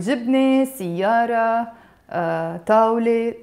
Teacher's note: So this is a te marbuta basically. So this te marbuta is usually silent, like the word jibne, siyara, tawle, all these have a te marbuta.